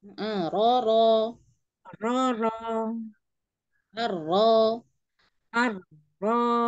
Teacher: Jadi lidah dicekungkan ya. Lidah belakang dinaikkan sedikit aja, yuk.